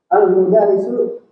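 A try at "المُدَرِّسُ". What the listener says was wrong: Sekali lagi diperbaiki bacaannya almudarisu salah almudarrisu Al almudarrisu tasdid di Dal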